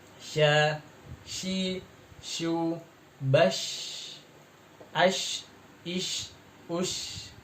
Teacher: Huruf shin ini mempunyai sifat namanya tafashi atau menyebarnya udara di dalam mulut ya.